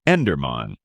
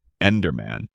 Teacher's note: In America, people say Enderman, with emphasis on the first syllable, Enderman, making it sound firm and direct.